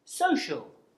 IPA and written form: ˈsəʊʆəl (social)